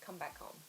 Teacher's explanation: it's quite common to make the H sound quite soft, like come back home.